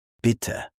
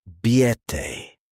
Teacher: A short vowel and a long vowel can change meaning completely. For example bitte short I biete long I. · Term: vowel length